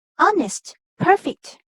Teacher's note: even when the second syllable is strong the first syllable is stressed